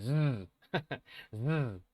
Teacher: Es igual que la s, pero con una vibración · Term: sonido de z